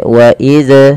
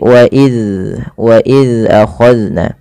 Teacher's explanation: Zal yaitu ujung lidahnya menempel dengan gigi seri atas. Maka dan huruf zal tidak boleh terpantulkan, tidak boleh wa iz ya.